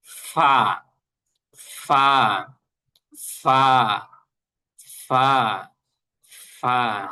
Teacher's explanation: নিচের ঠোটটা হলো উপরের যে দাঁতগুলা আছে এই দাঁতের সাথে লাগবে এরপরে হলো একটা বাতাস বের হবে